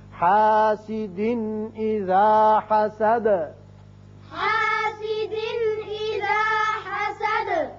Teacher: اذا حسد دال ساکن ہو جائے گی, آیت ختم ہوتی ہے تو دال کی صفت قلقلہ حسد کر کے پڑھیں گے